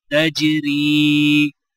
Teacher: را کو یا کے ساتھ ملاتے ہوئے ایک الف کی مقدار کھینچ کر پڑھا جائے گا اور وقف کرنے کی حالت میں بھی را کو یا کے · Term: یائلین